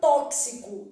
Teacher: esse x que tá aparecendo aqui ele produz o que a gente chama de dífono é um x com som de KS